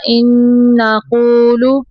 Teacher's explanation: نون مشدد پہ غنہ ہوگا